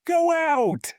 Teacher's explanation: As my lips move from the rounded O to the open out, I physically feel my lips making a W sound in the middle. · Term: W intrusion